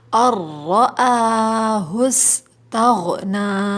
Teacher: سین میں سیٹی کی آواز آئے گی ، اور آخر میں ہم ایک الف کھینچیں گے، ٹھیک ہے،